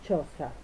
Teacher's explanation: primero se produce el cierre completo del paso del aire, es lo que llamamos oclusión, y luego se produce la fricación, que es el estrechamiento del canal con turbulencia. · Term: sonidos africados